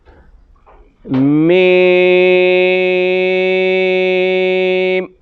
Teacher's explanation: میم، ہونٹوں کا اندر والا حصہ جو ہر وقت گلا رہتا ہے اس جگہ سے ادا ہوگا۔ آپس میں ہونٹ بند ہوں گے، پھر کھولیں گے